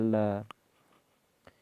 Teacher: हवा दोनों ओर से निकल जाती है